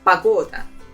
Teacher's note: the first letter O, we will pronounce it as A because it's not stressed. So it will sound as погода.